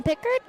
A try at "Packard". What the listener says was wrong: I believe that's Packard. See, that's an A right there, not an I. Got to work on those short vowel sounds, I know.